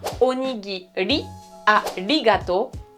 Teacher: Donc onigiri, arigato, on oublie, les japonais ne te comprendront pas, c'est bien onigiri, arigato, une espèce de R tout petit peu roulé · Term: R roulé